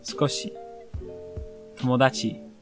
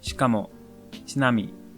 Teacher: The I sound in shi and chi is softer. It could almost be spelled without it. It's like you make the sounds with the I in mind, but without voicing it.